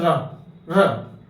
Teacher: जब रा वर्ड बोलोगे उस समय आपकी जीभ में कंपन आएगा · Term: प्रकंपित, कंपित